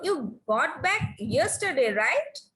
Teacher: So I know the answer, but to confirm the answer, I'm asking, right? So rising tone is used here because I know the answer, but to confirm, I am asking.